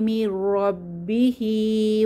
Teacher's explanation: এখানে নুন সাকিনের পরে র এসেছে, তাহলে গুন্নাহ ছাড়া মিলিয়ে পড়ব। রব্বিহি, হায়ের নিচে খারাজের এক আলিফ টেনে পড়ব।